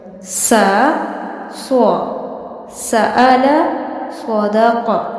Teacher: سین سیٹی کے ساتھ، جبکہ صاد سیٹی اور پر دونوں کے ساتھ پڑھا جائے گا